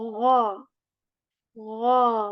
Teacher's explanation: ghain letter, ghain, which comes from the upper portion of our throat with this gargle sound, and we say gha.